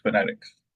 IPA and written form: fəˈnɛtɪks (Phonetics)